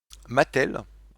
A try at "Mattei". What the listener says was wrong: Mattei? Mattei. Ouais, c'est un i.